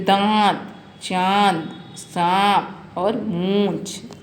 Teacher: चंद्र बिंदु, जो अनुनासिक भी कहते हैं, जो नाक और मुंह दोनों से इसके सांस लगा के ध्वनि निकलती है